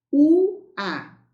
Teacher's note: É um ditongo crescente, porque tem uma semivogal mais vogal.